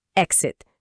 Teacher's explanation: E em velocidade normal, exit. Aqui o X não soa como KS, como em exercise. Ele soa como GZ. É o mesmo som de X em example ou exist, e o it final é curtinho.